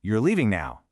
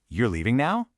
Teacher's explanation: If my voice falls at the end of the sentence, it's a statement.